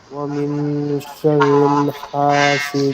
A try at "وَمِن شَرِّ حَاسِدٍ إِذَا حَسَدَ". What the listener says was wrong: শাররিল হবে না, ওয়ামিন শাররি। ওয়ামিন শাররি। কোথাও শাররিল হবে না।